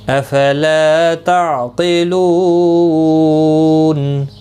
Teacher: وقف کی صورت میں نون ساکن پڑھا جائے گا، وقف بالاسکان ہوگا، مد العارض وقفی ہوگا، 3 سے 5 الف کی مقدار کے برابر کھینچ کر وقف کریں گے · عین ساکن کو ہلانا نہیں، قوف مستعلیہ ہے پر پڑھا جائے گا